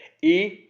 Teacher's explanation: ई तालु से है, क्योंकि जीभ मुंह की छत को छू रही है।